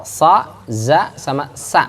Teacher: Ujung lidah nempel ke gigi bagian bawah tuh.